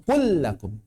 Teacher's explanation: Enggak dibaca kul lakum, enggak, langsung kul lakum. Lam pertamanya langsung dianggap hilang, langsung masuk ke tasydid. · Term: idgham